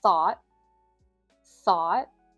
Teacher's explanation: We have the unvoiced th at the beginning, which you can think of as blowing air between your teeth with your tongue. And if you've seen some of my other shadowing videos, I have pointed out before that if you see a T at the end of a word in American English, we often stop that T or we drop the sound.